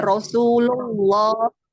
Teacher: Lafaz Allah dibaca tebal karena sebelumnya berharakat domah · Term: lam jalalah